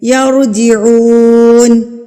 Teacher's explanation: واو ساکن سے پہلے ہمارے پاس پیش ہے تو یہ واو مدہ کہلائے گا یعنی کہ ہم اس کو ایک حرکت کے برابر کھینچ کے پڑھیں گے